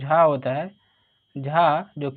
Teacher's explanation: तालव्य महाप्राण घोष व्यंजन वर्ण का उदाहरण